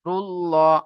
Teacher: আল্লাহ শব্দের লামের আগে পেশ এসেছে তাই আল্লাহর শব্দের লামকে পুর করে পড়তে হবে